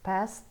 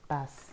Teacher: T-nya hilang. Jadi kalau African American Vernacular English consonant clusternya dihilangi.